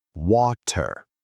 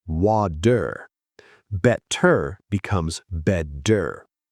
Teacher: In British English, the T is sharp, water. In American English, the T becomes a soft D. Water becomes wader. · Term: flap T